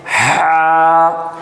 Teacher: جو ہمارا حلق ہے، حلق کا آخری درجہ ہے، وہاں سے نکلتا ہے · उसको गले के अंदर से निकाला जाता है। जो हमारा हलक है। हलक का आखिरी दर्जा है। वहां से निकलता है ह।